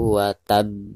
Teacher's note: langsung ditekankan ke huruf terakhir yaitu bak sekaligus dipantulkan dengan suara pantulan yang lebih keras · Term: qolqolah kubro